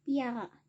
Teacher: bunyi P dipalatalisasikan sehingga terdengar sebagai bunyi P dan Y, sehingga morfem piara dilafalkan menjadi piara.